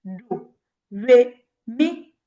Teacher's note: The first one, low tone. The second one, mid tone, and the third one, high tone.